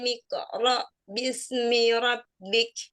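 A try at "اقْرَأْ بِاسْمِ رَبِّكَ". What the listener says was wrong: Jadi kalau qalqalah qaf jangan ditambahin hamzah. Jadi misalnya gini. Miqra. Enggak ya. Jadi miqra. Hamzahnya benar di ro tapi miqo gitu jangan ya. Jadi miqoro ya. Untuk qalqalah qaf hati-hati dengan hamzahnya ya. Hati-hati dengan hamzah sukun pada saat qalqalah qaf. Jangan miqo, tapi miqo.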